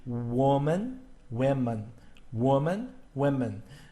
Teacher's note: the second syllable man and men are pronounced exactly alike